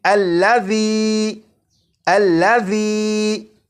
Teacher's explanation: اسی طرح اس لفظ میں ذال ہے، اور آپ نے اگر ذال کی بھی بھرپور پریکٹس کر لی تو آپ کو معلوم ہوگا کہ ذال کو سی ٹی کی آواز کے بغیر پڑھنا ہے